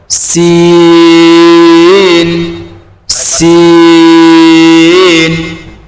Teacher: সিন ওই তায়ের মাখরাজ, জিভের আগা দাঁতের গোড়া